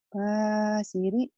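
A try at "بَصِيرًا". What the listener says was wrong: Kenapa jadi basiri? panjang pendek ya ujungnya ya.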